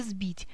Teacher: Мы произносим звонкий «з», потому что он стоит перед звонким «б», хотя пишем букву «с». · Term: озвончение глухого согласного звука